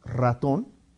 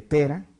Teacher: donde sí se aplica fortaleza en la R, o en el caso de pera, donde es una R suave